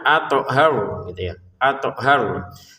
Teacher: toknya jangan lupa dipantulkan